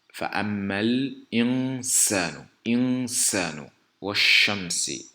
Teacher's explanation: la lettre Sa qui naturellement siffle, donc elle aura cet attribut de sifflement